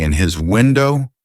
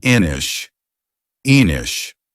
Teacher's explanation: We push the N and the I together in his. So now it sounds like inish, enish. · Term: link